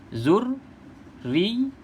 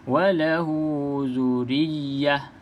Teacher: Terutama sekali bila sabdu ni berturutan macam ni lah. Dekat ra ada sabdu, dekat ya pun ada sabdu. Kena baca bagi jelas dua-dua. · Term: sabdu berturutan